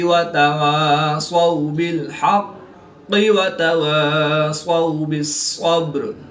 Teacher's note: واو ساکن سے پہلے زبر ہے تو واولین اس کو لمبا نہیں کریں گے